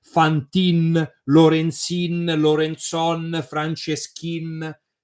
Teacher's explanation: the last vowel dies, because it's a typical feature of the Venetian dialect